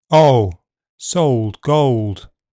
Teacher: the pronunciation before dark L starts back this was a feature of London accents but has become standard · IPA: [ɒʊ]